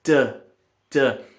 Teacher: When you're about to do it, you're probably going building up air pressure behind the tongue and you're squeezing your vocal fold so that when the tongue drops and the air moves again, it vibrates.